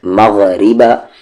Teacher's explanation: مخرج اپر تھروٹ اوپر والا حلق، ما کو غا میں مغ، را پر زیر ہے، اس کی آواز نیچے جا رہی ہے تو پتلی آواز سے لائٹ ساؤنڈ